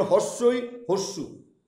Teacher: এই হস্যইকার হস্যুকাকের উচ্চারণ করতে গেলে আমাদের জিভটা সর্বোচ্চ স্থানে একদম উঁচুতে থাকবে। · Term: উচ্চ স্বরধ্বনি